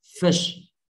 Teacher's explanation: F ở răng trên, cắn môi dưới, thổi ra nào